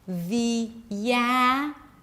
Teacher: And then when you connect the with attitude, you get another y sound to help connect the vowels